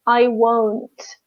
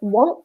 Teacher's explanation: just extend the O in won't and shorten the a in want